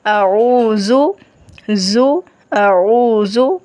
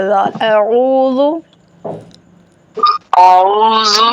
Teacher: جب زبان دانتوں کو لگے گی پھر یہ زال ادا ہوگا نرم اور سیٹی اور سختی کے بغیر ادا ہوگا